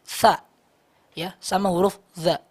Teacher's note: mereka memiliki makhraj yang sama, ujung lidah bertemu dengan tepi gigi seri atas